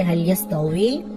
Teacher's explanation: ওয়াও ইয়াসের উই ঠোঁট গোল করে